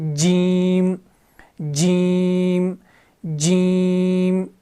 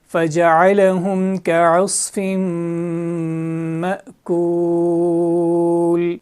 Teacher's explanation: زبان کا جو سینٹر والا حصہ ہے اس کو اوپر کے تالو کے ساتھ ملانا ہے اور زبان تھوڑی پھیل جاتی ہے